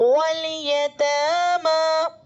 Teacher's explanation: والقمری، اسی طرح واو متحرک ہے، الف لام کے بعد حروف قمری میں سے یا آ رہا ہے تو الف کو نہیں پڑھیں گے، لام کو پہلے والے حرف یعنی واو سے ملا کر پڑھیں گے